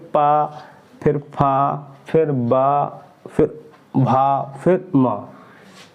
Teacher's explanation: अगर ये वाले वर्ण बोलेंगे तो इसमें दोनों ओठ मेरे बंद हो जाएंगे, बिल्कुल पा बंद होकर खुलेंगे, पा, फिर फा, फिर बा, फिर भा, फिर मा। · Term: ओष्ठ